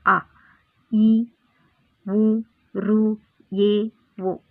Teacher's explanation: ತೆಗೆದುಕೊಳ್ಳುವ ಸಮಯ ಒಂದು ಮಾತ್ರ ಕಾಲವಾಗಿದೆ ಅ ಈ ಉ ಋ ಓ ಇವು ಇವಿಷ್ಟು ಅಕ್ಷರಗಳನ್ನು ನಾವು ಉಚ್ಚರಿಸಲು ಹೆಚ್ಚಿಗೆ ಸಮಯ ಬೇಡ ಒಂದು ಮಾತ್ರ ಕಾಲ ಸಾಕು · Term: ಋಸ್ವ ಸ್ವರಗಳು